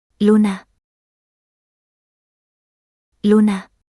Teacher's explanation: in Spanish, it's a rounded vowel and slightly more close and backward represented by the IPA symbol oo.